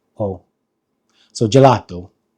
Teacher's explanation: The E is pronounced E, and then the A, the English A, is pronounced A, and then the O is more of an open O.